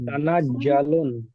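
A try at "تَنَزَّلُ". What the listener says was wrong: জিম পড়বে না, তানাজ্জালুল, জা আছে, জা, তানাজ্জালুল। আপনাদের জিম হয়ে যাচ্ছে, জিমটা হচ্ছে কি, জাটা একটু সিঁড়ি দিয়ে উচ্চারণ হবে, জা, তানাজ্জালুল।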